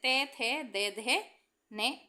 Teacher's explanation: जिन व्यंजनों का उच्चारण ऊपर के दांतों पर जीभ लगाने से होता है, उन्हें दंत व्यंजन कहते हैं।